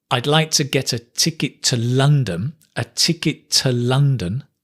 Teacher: it's not two it's ta right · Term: unstressed form